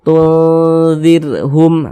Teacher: Huruf nunnya ini kita samarkan, jangan kita baca tun nazir, jangan dibaca tunnya tuh jangan dibaca sempurna tun, jelas jangan, tapi disamarkan tuh seperti itu. Kemudian didengungkan, jadi suaranya itu kita tahan, kita panjangkan sebentar. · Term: ikhfa hakiki awsat